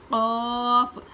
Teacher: हल्का पढ़ेंगे और ख की आवाज थोड़ी खुरदुरी होती है और कफ में खुरदुरापन नहीं होगा बल्कि तालू को ऊपर उठाएंगे यानी जुबान की जो तालू होती है उसको ऊपर उठाएंगे कफ